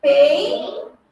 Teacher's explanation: Então, eu tenho aqui um ditongo, porque as duas vogaizinhas ficaram juntas na mesma sílaba.